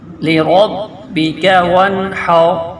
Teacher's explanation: اس کاف کو کھینچنا بھی نہیں ہے اور موٹا بھی نہیں کرنا، باریک پڑھنا ہے جلدی سے ، لربک وانحر، یہ واو نون کے ساتھ مل رہا ہے،